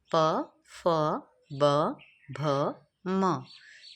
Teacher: Next है उ प वर्ग प वर्ग प फ ब भ म तो इन सारे ही वर्णों के ग्रुप को हम बोलते हैं प वर्ग तो उ और प वर्ग हमारे बोले जाते हैं ओष्ठ से तो आप उ बोल कर देखिए आपके होठ की जो शेप है वो चेंज हो जाती है। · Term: ओष्ठय